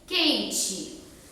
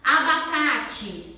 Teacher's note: A gente fala quente como se fosse um I no final, mas termina com E.